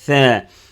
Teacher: F, fa, fa, fan, fan, fin, fun. Par contre la lettre tha, le bout de la langue entre les incisives supérieures et inférieures. Tha.